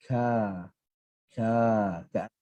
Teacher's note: kaf, makhraj dia pangkal lidah ke langit-langit atas. Kemudian sifat dia nipis, maka ke arah senyum ka.